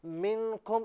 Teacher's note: نون ساکن پر غنہ ہونا چاہیے تھا